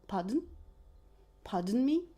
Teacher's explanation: if you use it to ask to repeat what the person just said, you will pronounce it with the rising intonation